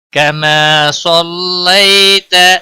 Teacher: صاد حروف مستعلیہ میں سے ہے، موٹا پڑھیں گے۔